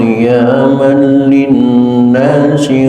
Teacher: Yang perlu diperhatikan dalam bacaan tadi di antaranya adalah Ja'alallahul ka'batal baital haram qiyamal ada tanwin ketemu huruf lam sebut idgham tam idgham yang sempurna masuknya suara tanwin ke huruf lam sehingga tidak terdengar sedikit pun sisa masuk semuanya maka disebut idgham tam.